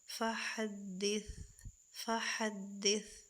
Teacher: وَأَمَّا بِنِعْمَتِ، آئین کو اس کے مخرج سے ادا کریں گے اور حرکت کو بالکل بھی نہیں کھینچیں گے، را کو پر کریں گے کیونکہ را کے اوپر زبر ہے، اور ہا کو اس کے مخرج سے ادا کر کے، ثا کو اس کے مخرج سے نرمی سے ادا کر کے وقف کریں گے